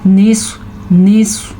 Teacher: اس کو موٹا کیا ہے کیونکہ سواد حروف مستعلیہ میں سے ہے